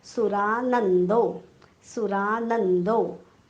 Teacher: नवर आघात डोक्यावर हलंत न कारण पुढे जोडाक्षर आलेले आहे. जोडाक्षराचा पहिला अर्धा भाग आघात म्हणून घेतलेला आहे.